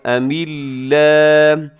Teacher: لفظ اللہ سے پہلے میم کے نیچے زیر ہے تو لفظ اللہ باریک پڑھیے گا